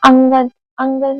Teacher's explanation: पहले उच्चारण नाक से करते हैं। बाद में उच्चारण मुख से होता है। जैसे अंगन अंगन का जब उच्चारण कर रहे हैं तो नाक से पहले हो रहा है और बाद में मुख से हो रहा है। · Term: अनुस्वार